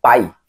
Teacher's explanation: Tá no A, caiu pro I, ok? Ditongo decrescente. E esse A e I tá juntinho, por isso que é ditongo.